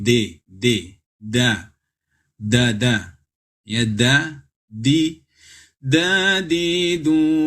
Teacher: dal makhrajnya adalah ujung lidah bertemu dengan pangkal gigi atau gigi gusi atas da, bukan huruf d dalam bahasa Indonesia, tapi d, da, ya, da, di, du, bad.